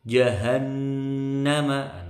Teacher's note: Jahannama, nunnya tasydid dengung lama.